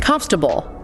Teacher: We crush the middle. It sounds like 3 syllables, or even 2.5. · The or and the a both get reduced or disappear entirely.